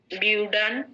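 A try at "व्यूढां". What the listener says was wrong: ডান নয়, ঢান। উইউ ঠিক আছে, ঢান, উইউ ঢান, হ্যাঁ।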